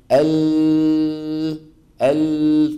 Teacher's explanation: فتجد بان طرف اللسان شو عامل مسدود الطرف الامامي مسدود والصوت لما عم يطلع عم يصطدم وينحرف بعضه يمنه وبعضه يسرى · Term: انحراف اللام